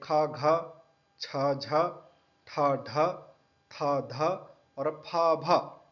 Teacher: इसको उच्चारण करते वक्त मुंह मुंह से गर्म हवा निकलता है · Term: सोष्म